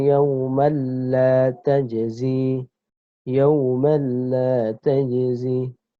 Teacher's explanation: maka cara membacanya adalah dimasukkan tanpa mendengung. Ya, kalau tadi idgham bi gunnah mendengung, kalau ini idgham bila gunnah tanpa mendengung, tidak boleh didengungkan.